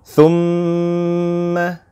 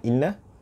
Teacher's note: Apabila kita masuk huruf mim tu dengan bertasydid, kita akan rasa satu getaran di batang hidung kita ini.